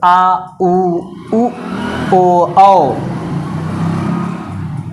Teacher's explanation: जब पश्च भाग उठता है तो आ उ ओ औ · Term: पश्च स्वर